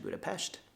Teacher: in Hungarian the S is pronounced sha